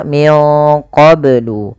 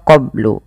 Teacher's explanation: harus dipantulkan karena ia ada bacaan Qalqalah maka Bacanya adalah minqblu kesalahan yang terjadi dalam membaca Qalqalah tidak